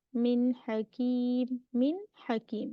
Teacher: exposing the noon from its makhraj without any extra nasal sound, its letters are articulated from the throat, and because the makhraj is so far, then the reason is that we do izhar.